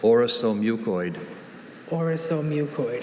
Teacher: That second syllable, the second vowel sound, is a schwa.